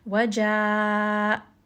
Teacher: And really quickly, as we are doing the med, we are going to have to switch the makhraj from the jawf to the halq. So we're switching from the med, which is coming from the empty space in the mouth, and then we're quickly going to switch to the throat. So you're going to hear the hamza has a little bit of that sharp sound.